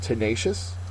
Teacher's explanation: tenacious second syllable is accented